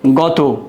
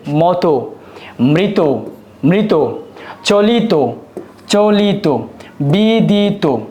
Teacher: গত এ ত এর উচ্চারণটা উকারান্ত হবে। যেমন এটাকে উচ্চারণের ক্ষেত্রে লিখতে হবে গত।